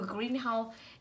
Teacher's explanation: ghép của green và house nó sẽ rơi vào từ đầu green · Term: trọng âm